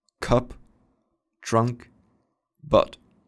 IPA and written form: kʌp trʌnk bʌt (cup trunk but)